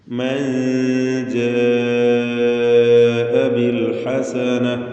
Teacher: നൂന് ഉച്ചരിക്കുമ്പോൾ നാവ് മേലെ അതിൻ്റെ മോണയിൽ പൂർണ്ണമായും സ്പർശിക്കാതെ അല്പം നാവിനെ അകറ്റി വെച്ചുകൊണ്ട് ഉച്ചരിക്കുന്ന രീതി, അതിനാണ് ഇഖ്ഫാ എന്ന് പറയും. നൂനിൻ്റെ ഉച്ചാരണത്തിൽ ഖൈശൂം നിർബന്ധമാണ്.